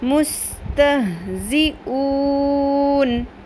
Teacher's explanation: وقف کی صورت میں جو مد ہوتی ہے وہ مد عارض ہوتی ہے 3 الف کے برابر